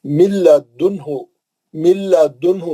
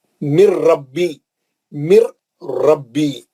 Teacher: لام اور را میں جو ہے نون بالکل پڑھے ہی نہیں جاتا، نون کا غنہ نہیں ہوتا، نون بالکل ہم را اور لام سے ہی پڑھنا رہتا ہے نا۔ · نون نہیں پڑھیں گے، نون غائب ہو گیا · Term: ادغام بلا غنہ